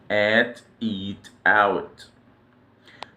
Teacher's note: The deepest part of the throat or a glottal stop. Pronounced in English at the beginning of words that start with vowels